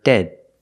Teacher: It's a stop D at the end of dead.